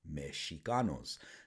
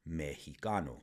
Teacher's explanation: the sh sound of the letter X transformed into an aspirated H sound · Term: consonant shift